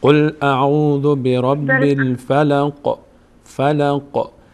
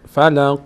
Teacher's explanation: دقت کنید که آخر آیات در سوره مبارکه فلق حرف قاف، حرف ب و حرف دال یک مقداری در هنگام تلفظ مخرجش میلرزه